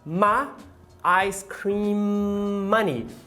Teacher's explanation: E quando ela vai falar o meu sorvete, né, o meu dinheiro do sorvete, ela fala my ice cream money. Ela não fala my, e sim ma. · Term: monotongação